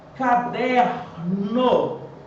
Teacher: Em caderno, o der é a sílaba tônica. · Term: paroxítona